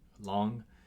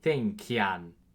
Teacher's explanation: before G and K, you have this like nya sound